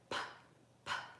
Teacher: So it's unvoiced. The sound is coming from your lips. And you can even tell because you can go p, p.